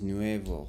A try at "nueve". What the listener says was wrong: Nueve. Not nuevo. Nueve. Nueve.